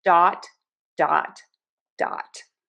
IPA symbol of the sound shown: dɑt